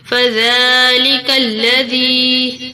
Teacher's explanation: زال کو نرمی سے ادا کریں گے، دانتوں کے نیچے زبان کو دے کر، اور زال کے اوپر کھڑی زبر ہے، اس کو تھوڑا کھینچ کر پڑھیں گے۔